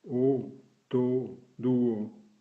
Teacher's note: O, avec deux points. O très ouvert et long, comme en français devant deux consonnes dans le mot porte